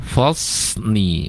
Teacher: Yang fasli tidak fasni ya. Fasli itu tanpa mencucu kedua bibir kita, kecuali nanti kalau shad-nya berharokat dhammah ya. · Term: huruf shad